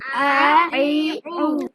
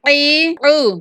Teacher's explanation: حمزہ انتہائی حلق سے نکلتا ہے اور عین وسط حلق سے نکلتا ہے